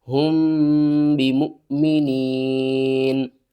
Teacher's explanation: یہاں پر ہم واو کو نہیں پڑھیں گے، میم کو حمزہ سے ملائیں گے، حمزہ ساکن ہے تو جھٹکے کے ساتھ پڑھیں گے